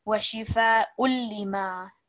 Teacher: A little bit of stress on the lam because it carries the shadda. 2 second elongation on the meme because this is alif madda washifa ullima.